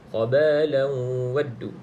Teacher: Okey, khabalan ada tanwin yang tidak selari, selepasnya bukan lam ataupun ra, maka baca dengan dengung. Di sini idgham ma'al gunnah masuk dalam waw.